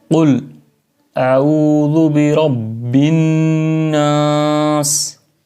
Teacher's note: سین میں سیٹی کی آواز آنی چاہیے · اعوذ، قل اعوذ برب الناس، را چونکہ را کو پر پڑھنا ہے، برب الناس، اور نون جو ہے یہ ناک میں آواز لے جانی ہے، غنہ کرنا ہے یہاں پر